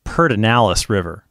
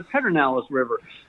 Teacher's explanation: the pronunciation, especially by President Johnson, put an R in the middle, in that word